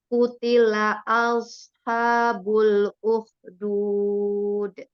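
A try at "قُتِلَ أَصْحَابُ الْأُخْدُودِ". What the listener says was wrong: sedikit ya, masih sedikit ya. Als, als, coba Als. Nah, Itu kalau makrotnya itu kan jadi ditahan ya, yang als. Jadi dia kan shotnya itu di apa ujung lidah di bawah ya. Als, als, als.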